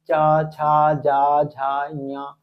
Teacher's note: इसके बाद में एक होता है आपका चा वर्ग होता है, चा वर्ग जो हो जाएगा इसको हम तालु वर्ग के नाम से जानते हैं। इनको बोलने में सब में जीभ जो होती है हमारी तालु में टकराती है